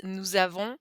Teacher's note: So it starts with a vowel, so we pronounce that z